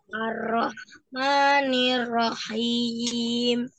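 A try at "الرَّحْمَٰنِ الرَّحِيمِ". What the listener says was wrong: Rohnya dialirkan ya, jangan ar-roh langsung ya. Ar-roh. Ar-Rahmanir-Rahim.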